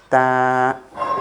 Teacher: Your tip of the tongue will connect to the roots of the upper front teeth. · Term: letter ta